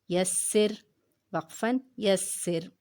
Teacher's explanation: را جو ہے یہاں پہ ساکن ہے تو اس لیے ہم اس کے پیچھے والا حرف دیکھیں گے، سین کے نیچے زیر ہے، اس لیے ہم نے اس کو رواں میں بھی باریک پڑھا ہے اور وقف میں بھی